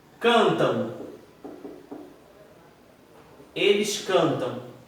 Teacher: Eles cantam. Você concorda comigo que é como se esse M tivesse um som de O? Cantam. Um O e o tio. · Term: semivogal